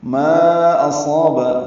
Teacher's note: ما اصاب، ما میں مد منفصل الف مدہ کے بعد حمزہ دوسرے کلمے میں آنے کی وجہ سے مد منفصل بنی، ہم اس کو 4 حرکات لمبا کرتے ہیں۔ اصاب میں حمزہ اقصی حلق سے ادا ہوگا